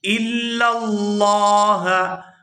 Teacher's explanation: یہاں لفظ اللہ کے لام کو پورا ادا کریں گے کیونکہ لفظ اللہ کے لام سے پہلے زبر ہے